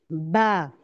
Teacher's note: ये दोनों दोनों होठों को बंद करने से अदा होगा।